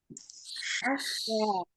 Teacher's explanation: Shin kok bisa ash? Ternyata waktu pas baca shin itu dia di tengah lidahnya ini naik ke atas.